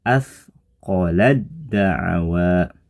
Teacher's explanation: huruf ta masuk melebur digabung ke huruf da sehingga suara ta jadi tidak nampak lagi · atqolad daawa irgam pada contoh ini termasuk jenis irgham mutajanisain Karena antara huruf ta dan Dal ini keduanya makhrajnya nya sama ya tempat keluarnya sama namun sebagian sifatnya berbeda